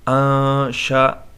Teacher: یہاں پر اخفا ہوگا اس لیے کہ نون ساکن ہے، اس کے بعد شین آئے ہے